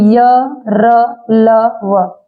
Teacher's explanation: य का उच्चारण स्थान तालु है, और र का दंतमूल, ल का दंतमूल, और व का दंतोष्ठ है। ये उच्चारण स्थान आपका ब्रैकेट में दिया गया, य तालु से, र दंतमूल से, ल दंतमूल से, व भी व दंतोष्ठ से। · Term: अंतस्थ व्यंजन